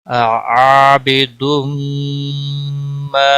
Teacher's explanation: میم آیا ہے اس لیے ادغام با گنہ ہوگا، عابدم ما الف مدہ ہے، ایک الف کے برابر، ما کو کھینچنا ہے · یہاں میم آیا ہے اس لیے ادغام با گنہ ہوگا